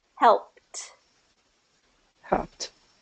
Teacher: So help is P. The ending sound is P, and it's voiceless. So what we do is with the ED ending, we do a voiceless T.